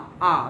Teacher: আ কিন্তু সেন্ট্রাল, না হচ্ছে সামনে না হচ্ছে পেছনে, এই জন্য আ হচ্ছে কেন্দ্রীয়।